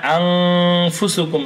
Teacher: এখানে আং ফুসুকুম, এই যে গুন্নাহটা হলো, এই গুন্নাহটার উৎপত্তি মূলত নাকের ভিতর থেকে